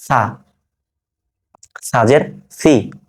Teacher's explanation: জিহ্বার আগা সামনের উপরে দাঁতের আগার সাথে লাগিয়ে সা উচ্চারণটা করছি